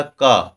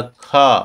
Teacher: अल्प प्राण क्यों क्योंकि इसमें हवा निकाल ही नहीं रही है